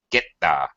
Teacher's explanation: It's not really a very clear T or a very clear TH.